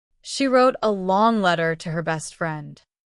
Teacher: The stressed words are wrote, long letter, best friend.